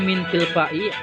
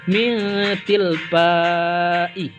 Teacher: Karena ini termasuk huruf ikhfa, bukan huruf izhar. Maka tidak boleh dibaca jelas. Maka harus dibaca samar-samar.